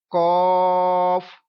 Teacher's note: ہونٹ گول مت کریں، گول نہ ہونے دیں اس کو پڑھتے ہوئے، ٹھیک ہے، اور موٹی آواز میں پڑھیں